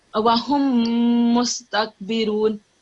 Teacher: So that's meme with mushaddad, so nasal sound.